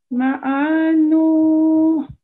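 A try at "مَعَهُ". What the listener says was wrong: Okay, much better. You don't have to prolong the ayn. Ma'anu.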